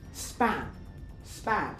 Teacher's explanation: In consonant clusters such as sp. At the end of the consonant cluster, P is unaspirated and is also pronounced more lenis. Whereas the start at the start of a word P is the most fortis you can get um span span.